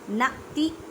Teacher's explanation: नाती हमज़ा साकिन है, इस वजह से इसे झटका देके पढ़ेंगे